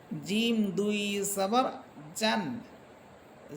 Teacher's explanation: জিহ্বার মধ্যখান তার বরাবর উপরে তালুর সাথে লাগবে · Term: জিম হরফের মাখরাজ